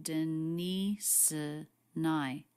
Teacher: The ending S sound links into the schwa, Denise and I, and then the N sound links right into the I diphthong